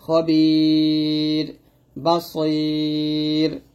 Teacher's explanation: আর ইয়া সাকিনের সাথে যেহেতু আসছে এই রটা পাতলা হবে, খবির বাসইর, অথবা এরকম হয় ইয়া জবর খয়, র দুই যে ঋণ খয়রিন আছে থামি খয়ির, পাতলা হবে।